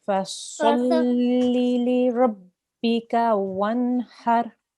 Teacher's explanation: Nice thick sound for your sad there.